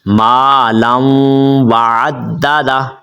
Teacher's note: یہ جو واو ہے یہ واو کے اوپر آپ نے غنہ کرنا ہے